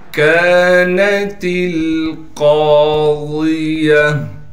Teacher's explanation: پڑھنا ہے، تا کو باریک کر کے لام سے ملائیں گے، قاف کو موٹا کر کے پڑھیں گے اس لیے کہ قاف موٹے حروف میں سے ہے اور قاف کے بعد الف مدہ ہونے کی وجہ سے قاف · گول تا وقف کی حالت میں ہا بن جائے گی · قاف کے بعد الف مدہ ہونے کی وجہ سے قاف کو ایک الف کی مقدار کھینچیں گے · الف کی مقدار کھینچیں گے، نون کو بغیر کھینچے پڑھنا ہے، تا کو باریک کر کے لام سے ملائیں گے